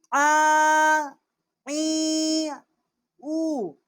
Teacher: عین ہے، وسط حلق سے اس کا مخرج ہے